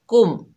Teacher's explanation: साकिन को जाहिर करके पढ़ेंगे, इक्फा गुन्ना कुछ भी नहीं होगा, जैसे कुम। देखिए हमने जाहिर करके पढ़ा अद कुर कुम अद कुर कुम।